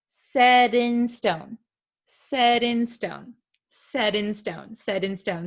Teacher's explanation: However, the American T is quite tricky. So sometimes it is something called a flap T. It sounds like a soft D sound.